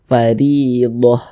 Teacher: huruf ro memiliki tanda baca kasrah maka dia dibaca tipis dibaca tarqik sehingga pangkalisan kita itu tidak naik terangkat ke atas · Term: tarkik